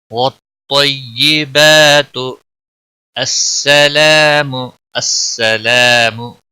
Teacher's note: الف مدہ ہے، ایک الف کے برابر کھینچ کر پڑھیں گے، میم کو کھینچنا نہیں۔